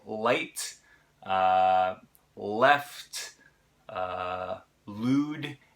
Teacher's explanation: is the l that we're pronouncing and like I said it's pronounced with the tip of the tongue forward in the mouth up against your alveolar Ridge